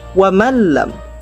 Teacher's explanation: Wa man lam, nun sukun bertemu dengan lam. Nun dibaca samar, lam dibaca tanpa dengung. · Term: idgham bila gunnah